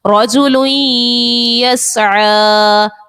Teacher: کتابً یلقاہ، یہاں پر تنوین کے بعد یا حرف یرملون کا ہے، ادغام کا قاعدہ غنہ بھی کریں گے. رجل یسعی، تنوین کے بعد یا حرف یرملون کا ہے، یہاں پر بھی غنہ کریں گے